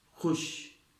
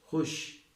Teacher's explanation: خے پیش خو، واو معدولہ، شین ساکن، خوش۔ معدولہ جب بھی واو ہوتا ہے تو اس کی آواز نہیں آئے گی، یعنی یہ انگریزی کے حروف کی طرح سائلنٹ ہوگا